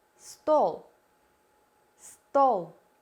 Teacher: the tongue is pushed back the body of the tongue is located approximately in the middle of the oral cavity we round our lips and try to pronounce sound o o o the sound correspond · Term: o sound